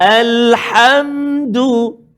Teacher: Dia ada rongga kerongkongan kita ni. Ada 3 stesen kan? Atas, tengah, pangkal. Ha duduk dekat tengah.